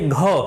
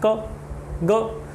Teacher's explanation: लेकिन इसके विपरीत आप ख, घ इनका उच्चारण करेंगे तो आप महसूस करेंगे कि इनका उच्चारण करते समय मुख से वायु की मात्रा अधिक निकल रही है, अतः ये महाप्राण व्यंजन हैं।